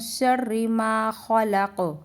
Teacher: खलक में भी कौफ पर कलकला होगा